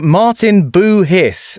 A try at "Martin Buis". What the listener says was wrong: The the H is uh is silent.